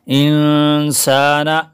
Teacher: سین کے الف کو بھی کھینچیں گے